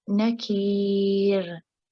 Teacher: the ra is not an airy letter. It's a letter where you hear the sound of your voice. So you don't want to hear nakir, this air at the end.